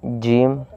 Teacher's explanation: جیم جب نکلے گا جب زبان کا درمیان کا حصہ اوپر کے تالو سے ٹکر کھائے